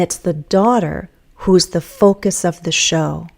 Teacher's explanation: at the end I'll have falling intonation